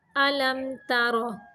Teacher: تار باریک ہے اور را موٹا ہے